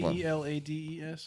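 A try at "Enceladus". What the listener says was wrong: No, there's no K in there. It's a C.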